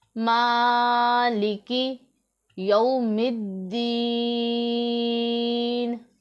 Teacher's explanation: وقف کی وجہ سے متحرک حرف کو ہم ساکن کر دیں گے، نون کے نیچے زیر تھی تو اسے پھر ہم ساکن حرف میں بدل دیں گے